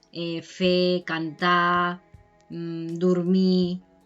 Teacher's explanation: no se pronuncia la R al final